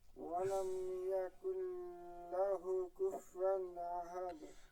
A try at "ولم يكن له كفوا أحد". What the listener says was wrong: ولم يكن له এরকম ধরে রাখা যাবে না।